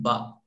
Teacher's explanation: با کا مخرج دونوں ہونٹوں کی تری کا حصہ کہ دونوں ملیں گے اور الگ ہو جائیں گے